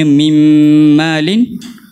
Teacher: Mimmalin kita hazafkan nun ni, ibarat kita sebut mim yang bertasydid. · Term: idgham